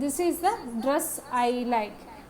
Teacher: The time between the accented syllables, this dress and like will be the same irrespective of the number of unaccented syllables. The time intervals between them will be roughly the same. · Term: stress timed rhythm